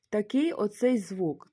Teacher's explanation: він чується як в, але це не звук в, як в слові українському вода, а це щось таке середнє між б і в